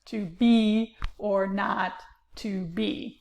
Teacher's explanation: they come in a unstressed, stressed pattern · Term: iambic pentameter